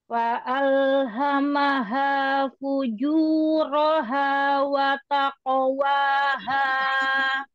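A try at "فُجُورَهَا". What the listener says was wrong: Fuju, jangan naik nadanya. Fujuroha. Nah, fujuroha. Ju, ke depan. Jangan naik. Juroha.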